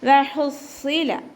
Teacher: ഹ തൊണ്ടയുടെ മധ്യഭാഗം വസത്തുൽ ഹൽക്ക്, സൗണ്ട് ക്ലിയർ ആക്കി കൊടുക്കുക. വഹുസ്സില സ്വാദ് ഉയർത്തിച്ചരിക്കുന്ന അക്ഷരങ്ങളിൽപ്പെട്ടതാണ്. ഇസ്തിഅലാൻ്റെ ലെറ്ററാണ്, അപ്പോൾ നല്ലോണം ഉയർത്തിയിട്ട് ശ്രദ്ധ കൊടുക്കുക. കുറച്ച് കനം കൊടുത്തിട്ട് ഉച്ചരിക്കുക.